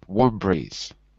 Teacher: instead of saying warm breeze, we say them together as if it's one word, warm breeze.